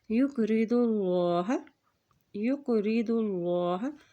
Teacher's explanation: اب جہاں دیکھیں اللہ کے نام سے پہلے پیش آ گیا ہے تو یہاں پر اللہ کا نام بھی موٹا ادا کیا جائے گا